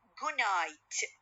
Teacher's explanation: D sound will be changed into nasal sound. So the air goes through or from my nose